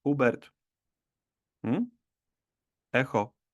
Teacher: en polaco la H nunca es muda, siempre se pronuncia como una J. Sí, como en jamón, pero con esa diferencia que nuestra H también es un poquito más suave